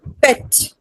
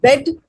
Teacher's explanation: the word pet begins and ends with voiceless stops and bed with voiced stops